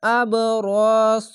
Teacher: এই সদ এবং র মোটা অক্ষর, তার জন্য জাবার উচ্চারণ হবে না, যেরকম শব্দ সেরকম ভাবে র স এভাবেই উচ্চারণ হবে।